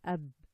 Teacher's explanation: Make sure not to add any air and change the ba into a pa.